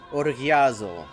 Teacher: the stress is on the last syllable